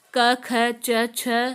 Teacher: इन वर्णों के उच्चारण में प्राणवायु में कंपन नहीं होता, अतः कोई गूंज न होने से ये अघोष वर्ण होते हैं